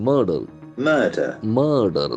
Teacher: That R must be silent because it is after a vowel letter. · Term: earth sound